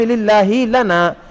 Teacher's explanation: پھر آپ لام کو بھی باریک کر کے خاص طور پر پڑھیں